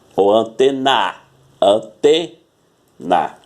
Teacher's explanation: O T é o mais forte, então ela é uma paroxítona.